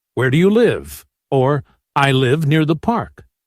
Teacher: Falling intonation. Your voice goes down at the end. It's used for statements and ebwh questions.